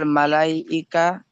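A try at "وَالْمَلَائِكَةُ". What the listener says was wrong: মলাইকা হচ্ছিল তখন কেন? ওয়াল মালা, এত বড় একটা মাদ দেয়া রয়েছে, মাদের পরে হামজা একই শব্দের মধ্যে রয়েছে, মাদ্দে মুত্তাসিল, 2 থেকে 3 আলিফ টান দিতে হবে না?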